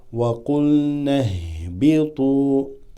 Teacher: Now we got a Hamzat al-Wasl that drops, followed by a ha that has a sukoon.